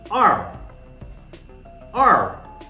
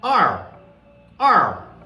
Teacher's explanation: you must have noted that my voice was falling sharply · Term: fourth tone